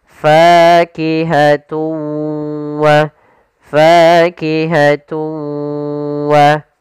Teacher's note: Cara membacanya yaitu suara tanwinnya kita masukkan langsung ke huruf waw dan kemudian kita tahan gunnahnya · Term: idgham bi gunnah